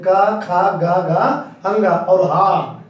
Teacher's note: का खा गा घा अंगा और हा, इन सबको उच्चारण स्थान क्या होता है, कंठ।